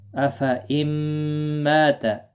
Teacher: ما میم مشدد پر غنہ ہوگا، غنہ کے ساتھ پڑھیں گے. یہاں پر ادغام مع الغنہ ہوگا.